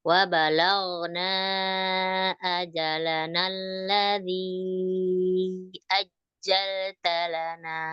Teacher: Jimnya ditekan di nabar kena ada huruf tasdid.